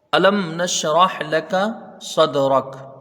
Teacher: صاد کو دال سے ملا کے جلدی پڑھیں گے، دال میں قلقلہ ہوگا · میم ساکن کو ظاہر کر کے بغیر غنہ کے جلدی پڑھا جائے گا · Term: اظہار شفوی